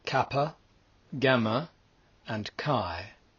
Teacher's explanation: Then lastly, there are the palatal mutes, which, as the name suggests, engage the palate, the roof of the mouth, and are spoken more from the back towards the middle of the mouth. They are kappa, gamma, and chi.